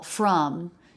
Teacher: We change from the as in butter vowel, from, to the schwa